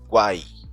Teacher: Veja que esse U não forma uma nova sílaba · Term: tritongo